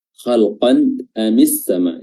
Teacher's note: Khalqan amis sama, hukumnya adalah izhar halqi. Dikatakan izhar karena tanwinnya dibaca jelas, tidak samar-samar dan juga tidak melebur, dan hamzah di sini makhrajnya adalah tenggorokan, makanya dikatakan hal atau halqi.